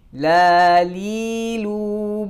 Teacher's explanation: huruf lam keluar dari ujung lidah yang bertemu dengan gusi dari dua gigi seri atas